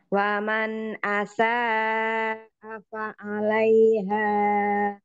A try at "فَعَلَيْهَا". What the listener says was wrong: Fa'alayha. Itu matobi'i, jangan terlalu panjang. Cukup dua, dijaga dua harokatnya ya. وَمَنْ أَسَاءَ فَعَلَيْهَا فَعَلَيْهَا